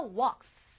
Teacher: 그 끝나는 소리가 unvoiced, 울리지 않아요. 즉 여러분의 성대를 쓰지 않아요.